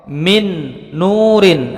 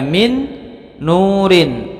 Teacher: mendengung panjangnya dua harokat contoh minnur in asalnya bacaannya mint Nurin ketika bertemu dengan huruf nun di depannya maka menjadi ditasydidkan mendengung panjang dua harokat